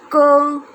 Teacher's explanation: क का उच्चारण कहाँ से हो रहा है? हमारे कंठ से, है ना। कंठ यानी कि गले से।